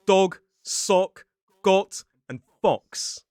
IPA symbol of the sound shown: ɒ